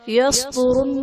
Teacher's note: یصدرن میں صاد حرف مستعلیہ پر پڑھا جائے گا، را پر پیش ہے، را کو پر پڑھا جائے گا